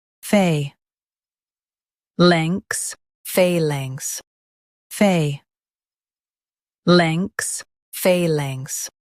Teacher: In US, stress phay and keep links smooth.